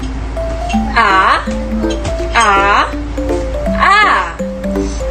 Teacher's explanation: Ang letrang A ay pasentral, pababa, di pabilog.